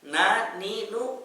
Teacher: Na, ni, nu, karena rongga hidungnya terbuka. Begitu juga dengan mim, ma, mi, mu, rongga hidungnya terbuka. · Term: huruf nun